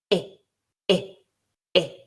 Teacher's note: I is more closed and is slightly more central than eh. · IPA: /ɪ/